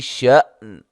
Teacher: ش حمزہ کو جھٹکے سے ادا کریں گے